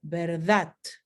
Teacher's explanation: Podemos tener la consonante oclusiva sorda como verdad. Por ejemplo, en Cataluña o Valencia, en España.